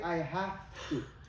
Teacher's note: when the V comes next to the T the T kind of bullies the V into also becoming unvoiced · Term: assimilation